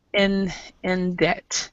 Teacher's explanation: Okay, the pronunciation rule really is if there is a B or a T before, excuse me, a B or a P, P before a T, it is silent. So we actually do not pronounce the B here, and we don't pronounce the P in receipt.